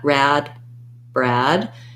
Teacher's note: my tongue is already in the r position at the start of the word so i just close my lips to make the b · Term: br blend